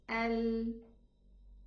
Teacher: The whole tongue does not close on the upper jaw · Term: infitah